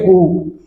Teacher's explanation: तो हमारा ओष्ठ जो है वृत्ताकार की शेप में आ जाएंगे